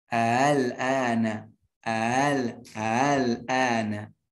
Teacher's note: Ada dengan tasil bihamzati saniyah. Mentashilkan hamzah yang kedua.